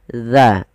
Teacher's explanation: ujung lidah nempel dengan gigi seri atas kita